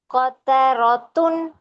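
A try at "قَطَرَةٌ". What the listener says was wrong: Yes, make the ra heavy and ta not dhammatain. Shrink your tongue inside nicely, then pronounce dhammatain.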